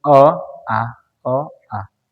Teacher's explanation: अ में थोड़ा मुंह कम खुलता है और जैसे आ बोलते हैं तो ज्यादा खुलता है यानी अ की अपेक्षा इसमें ज्यादा समय लगेगा दृश्य स्वर में और इसकी अपेक्षा अ में आधा समय लगेगा ह्रस्व स्वर में अब क्लियर है समझ गए होंगे ठीक तो आप इसको समझ लेना छोटा इ ई चेहरा देख रहे है ना?